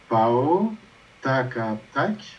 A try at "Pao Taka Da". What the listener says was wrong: Chaque fois, quand le ta est préfixé, en général, le ta devient da. Préfixé, ça veut dire que tu as un préfixe avant.